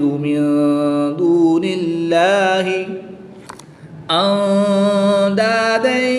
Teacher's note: نون ساکن کے بعد دال حرف اخفا میں سے ہے تو یہاں پر اخفا ہوگا یعنی غنہ کر کے پڑھیں گے